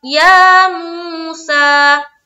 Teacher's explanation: यहाँ पर हम वाव मद्दा को एक अलिफ की मकदार के बाकदर खींचते हैं, जितना हम अलिफ मद्दा को खींचते हैं उसी तरीके से।